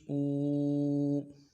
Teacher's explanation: حمزہ کھڑی زیر ای، حمزہ الٹا پیش او، الٹا پیش میں ہونٹوں کو خوب گول کریں گے اور ایک الف مقدار میں کھینچیں گے۔